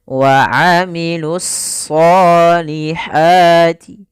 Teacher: Yaitu alif lam yang dia ditulis tapi tidak dibaca sehingga langsung kepada huruf shad. Kemudian pada lafal shad itu kita tebalkan wa amilus sholihati, ya, ditebalkan huruf shadnya.